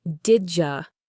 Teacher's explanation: When the D sound at the end of did is followed by the Y sound at the beginning of you, the two sounds blend together. They combine to create a completely new sound, the J sound like in the word jam. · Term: assimilation